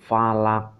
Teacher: Nah, ini qaf, ini qalqalah. Nah, ini bacaan qalqalah. Jadi dia memantul